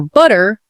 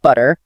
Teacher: In many British accents, the T sound, especially between vowels or at the end of words, stays quite sharp and distinct, not softened to a D sound like in some other varieties of English. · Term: crisp t